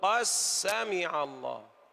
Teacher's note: أين الدال؟ ها؟ أدغمت في السين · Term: تقارب